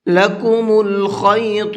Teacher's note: خا کو پر کر کے پڑھیں گے اور ساتھ ساتھ طا کو بھی پر کر کے پڑھیں گے